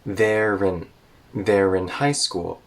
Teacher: the r in there connects to in